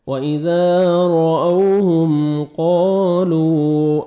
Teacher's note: رأوہم میم ساکن کا اظہار ہے، جلدی پڑھیں گے، وَإِذَا رَأَوْهُمْ را موٹا کر کے پڑھنا ہے را کو آپ نے